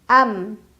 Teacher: satu kali bacaan amumulaibu fahum yaktubun am ada izhar syafawi karena ada mim sukun yang bertemu dengan huruf Ain cara baca mim sukunnya jelas tidak ditahan